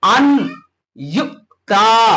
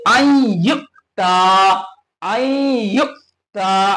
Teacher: আন ইউ তা পড়া হবে না, বলকে আনকে মার্জ করতে হবে ইয়ার দ্বারা, यानी পরে যে হুরুফটি এসে ইয়া, এতে তাসদীদ লাগিয়ে মুদগাম করে দেওয়া হবে, মার্জ হয়ে যাবে।